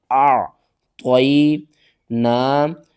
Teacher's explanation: انا انا اعطینا اعطینا، حمزہ عین زبر طا یا زبر طی، اعطی، نون کھڑا زبر نا، اعطینا، یا ساکن سے پہلے زبر ہے تو اس کو ہم جلدی کے ساتھ پڑھیں گے، حروف لین ہے، اور عین کو آپ نے حلق کے درمیان والے حصے سے ادا کرنا ہے، عین کا جو مخرج ہے وہ آپ نے پورا ادا کرنا ہے۔